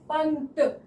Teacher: त वर्ग का पांचवा वर्ण न है तो यहां पर अनुस्वार की साउंड अनुस्वार की ध्वनि जो है वो न से आ रही है